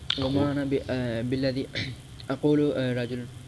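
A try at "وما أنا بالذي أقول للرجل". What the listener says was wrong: اقولو لام کیوں چھٹ رہے ہیں.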